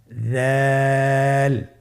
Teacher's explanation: দালের মাখরাজ হলো জিহ্বার আগা সামনের উপরের 2 দাঁতের আগার সঙ্গে লাগিয়ে উচ্চারিত হয়